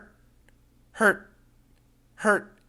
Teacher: We stop very clear at the t.